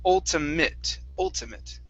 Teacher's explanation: with the ate at the end, we're going to pronounce that like an it.